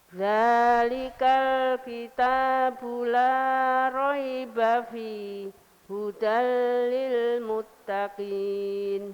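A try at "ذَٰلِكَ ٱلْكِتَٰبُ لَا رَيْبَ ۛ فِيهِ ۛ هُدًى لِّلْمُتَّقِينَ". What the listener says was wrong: Kalau ibu berhenti fi, kalau ibu berhenti fi, itu harus nafas dulu. Kalau tidak bernafas, saktah namanya. Dzalikal kitabu la raiba fihi hudal lil muttaqin. Kalau ibu bacanya begini. Dzalikal kitabu la raiba fihi hudal.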